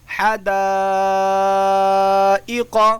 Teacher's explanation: ٹھیک ہے، آگے دیکھیے حدائق، اس کے اندر بھی مد متصل ہوگا، اس لیے کہ الف مدہ کے بعد حمزہ اسی کلمے کے اندر آیا ہوا ہے۔ 3.5 الف کی مقدار یا 4 الف کی مقدار، اس کو کھینچ کر پڑھیں گے